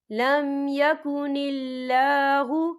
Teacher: یہ اللہ کا نام باریک پڑھا جائے گا کیونکہ اللہ کے نام سے پہلے زیر ہے